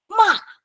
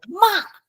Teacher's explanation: Fourth tone is from a highest point to very low. Okay, and it's very sudden.